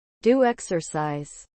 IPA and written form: du: eksəsaiz (Do exercise)